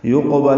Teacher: یقبل میں یا کو قاف سے ملائیں گے، قاف پر پڑھیں گے، یہ حروف مستعلیہ میں سے ہے اور قلقلہ میں سے ہے، اس پہ قلقلہ ہوگا، موٹا پڑھا جائے گا